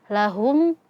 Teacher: Hnya domah maka bibir monyong. Humnya sukun maka bibirnya dikembalikan lagi.